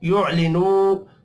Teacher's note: वाव मद्दा है, इसको भी एक अलिफ के बराबर खींच कर पढ़ना है